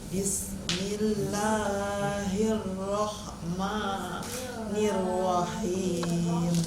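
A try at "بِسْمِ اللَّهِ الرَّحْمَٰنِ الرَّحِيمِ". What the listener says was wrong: cuma himnya kurang kena ke tengah tenggorokan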